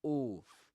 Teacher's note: This is a long o sound, you know, with your lips rounded.